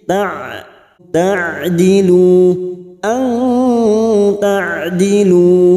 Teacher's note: Ta'dilu huruf ain sukun jangan samakan dengan hamzah. Huruf ain memiliki sifat tawasud dan jahar. Ta ada aliran sedikit.